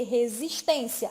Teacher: É aquela palavra que tem a penúltima sílaba mais forte, mais intensa, que é a sílaba tônica. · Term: paroxítona